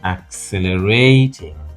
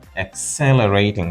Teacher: accelerating with a stress on the second syllable